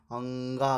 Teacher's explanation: कंठ भी होता है और नासिका भी होती है